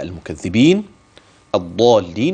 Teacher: الضاد لا تتحول إلى حرف آخر، وعندي كمان فيها أي في حرف الضاد التفخيم، وبعدها الألف، والألف سيمد 6 حركات. خلي بالك بقى كده من دي، ماشي؟